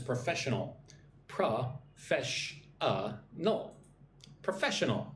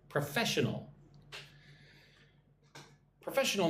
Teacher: 4 syllables. Put the emphasis on the second syllable.